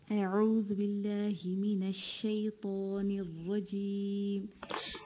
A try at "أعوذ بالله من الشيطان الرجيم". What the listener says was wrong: So أعوذ بالله, this is shorter. Give it timing. أعوذ. So the O complete two counts. أعوذ not أعوذ بالله. أعوذ بالله. And open your mouth more when you do any فتح.